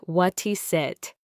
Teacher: Often sounds like what he sit. The t from what links to the is and the s from is links to the it.